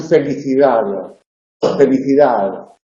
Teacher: tiene un alófono que es aproximante y relajado y se representa mediante una D pequeñita, una D pequeñita volada, que es lo que pronunciamos en felicidad. · Esa D del final casi no se percibe